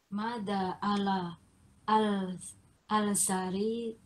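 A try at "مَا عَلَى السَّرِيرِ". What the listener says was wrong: Alif lam samsiah. Jadi langsung alas.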